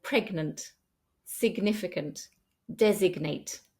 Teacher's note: when GN is in the middle of a word, we need to pronounce the G separately from the N.